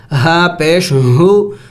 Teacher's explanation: حلق سے ادا کریں گے، اور حلق کے آخری حصے سے جو سینے کے ساتھ ہے